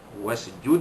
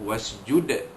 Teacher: Dan ayat yang terakhir sekali, ayat ke-19, kalla, lam alif di atas la, itu mad asli, la lagi sekali mad asli, tuti'hu, tuti'hu, di sini tidak ada hukum apa-apa, tuti'hu, wasjud, wasjud, wasjud, ni dia, dal mati di ujung kalimah, maka dibunyikan qalqalah kubra, wasjud, dia kena lantunan itu besar, wasjud, waqtarib.